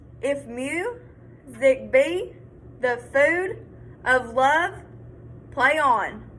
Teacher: say each one of these iambic feet unstressed then stressed